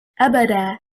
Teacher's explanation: Stressing on the first حركة, which is حركة الهمزة.